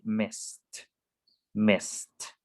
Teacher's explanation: So it ends in a voiceless sound, which is s.